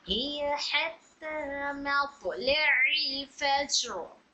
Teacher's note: हिया हा निचले हलक से